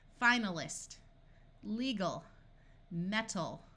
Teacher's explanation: We can add suffixes and the AL retains the muffled schwa sound